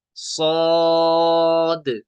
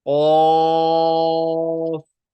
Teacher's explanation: मद्द लाजिम को तीन अलिफ खींचेंगे तो इस सौद को हम तीन अलिफ खींचेंगे